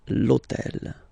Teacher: remember that in French we don't pronounce H, okay, so basically the first sound of the word is the vowel O